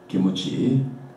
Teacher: It's pronounced by Japanese kimuchi, with vowel u inserted.